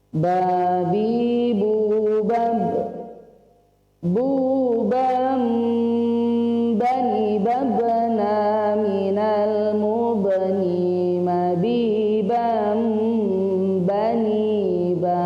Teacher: jadi suara nun sukun atau tanwin bertemu dengan ba, maka yang muncul adalah suara mim